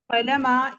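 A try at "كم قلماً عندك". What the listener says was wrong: कलमा नहीं बोलते उसको, दो बार रहता है। कलमन, कलमन इंदका।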